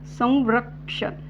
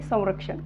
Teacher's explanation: अनुस्वारामध्ये व युक्त उच्चार होत आहे